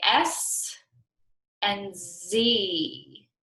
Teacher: both of these consonant sounds are made up by positioning the tongue close to the ridge behind our upper teeth and pushing air out of our mouth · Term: sister sounds